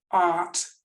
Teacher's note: Art, the A is lengthened by the letter R, always changes the vowel before it.